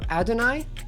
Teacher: Most common accepted pronunciation puts the stress on the first syllable